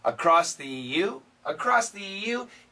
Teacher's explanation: if we say it really fast this s can cancel the th